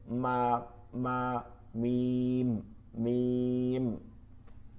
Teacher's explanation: বা ঠোঁটের ভিজা জায়গা থেকে, বা দেখেন শুকনা জায়গা এই দুইটাকে বলে বা, হয় না এই বা, বা। মিম ঠোঁটের শুকনা জায়গা থেকে